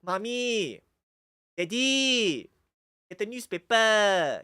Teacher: they really drag out that last vowel